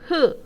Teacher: 목청 소리의 경우에는 성대의 통로가 어떻게 되는 거야? 좁아지면서 나는 소리인 거예요